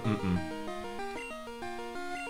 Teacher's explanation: den bilabialen, stimmhaften Nasal mit zwei Glottalverschlüssen